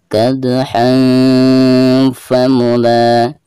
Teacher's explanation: cara membaca tanwin tersebut itu harus disamarkan disertai dengan guna. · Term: ikhfa